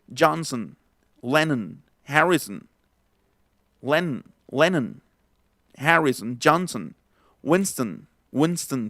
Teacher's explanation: en todos los apellidos que traen al final son, en realidad ya no se va a pronunciar la O, sino va, por ejemplo, a ser Johnson, Lennon, Harrison, Lennon, Harrison, Johnson, Winston, por ejemplo, Winston, que era una marca de cigarros, ¿no? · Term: schwa